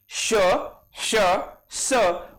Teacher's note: उच्चार करताना हवा घर्षण पावते, म्हणून त्यांना उष्मे म्हणजेच घर्षक व्यंजने म्हणतात.